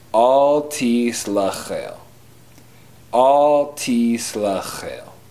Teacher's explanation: In the word slechel, there's an X wedge, which is a throat clearing sound made in the back of your throat